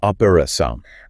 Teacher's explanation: In Brazilian Portuguese, you'd hear that second O with a more open, relaxed quality than you would in European Portuguese.